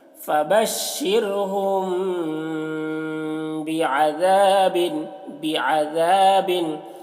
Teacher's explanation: मीम में यहाँ पर गुन्ना इख्फा करना है